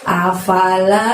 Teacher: a-nya pendek, fa-nya pendek, la-nya panjangnya 2